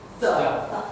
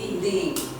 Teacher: Normally we pronounce the with a short sound like The. But when it comes before vowel sound, we pronounce it as a long The.